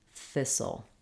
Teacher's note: The first syllable is stressed, so thi is long and sul is short and reduced.